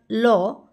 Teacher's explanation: জীভের সম্মুখ প্রান্ত দন্তমূলকে দৃঢ়ভাবে স্পর্শ করার সময় শ্বাসবায়ু জীভের দুই পাশ দিয়ে নির্গত হয় এর ফলে যে ব্যঞ্জন ধ্বনি সৃষ্টি হয় তাকে পার্ষিক ব্যঞ্জন ধ্বনি